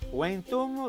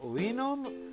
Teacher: La V latina è una semiconsonante, si pronuncia come una U